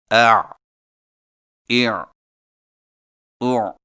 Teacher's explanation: حلق سے رگڑ کھاتی آواز۔ ادائیگی کے وقت زبان کی جڑ کو حلق کی طرف مضبوطی سے دباتے ہوئے ادا کریں، مثلا اع اع او۔ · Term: عین